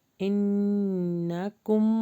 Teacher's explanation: یہاں پہ غنہ بھی ہو رہا ہے، نون کے اوپر بھی مشدد ہے اور میم کے اوپر بھی مشدد ہے